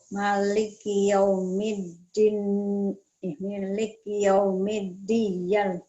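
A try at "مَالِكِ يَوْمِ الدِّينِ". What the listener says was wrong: Jangan buru-buru, sama aja Bu. Maliki yaumiddin. Ininya I-nya dibaca.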